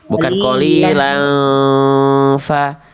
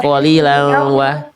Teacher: Ya, dileburkan ke huruf wawu, bukan disamarkan. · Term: idgham bi gunnah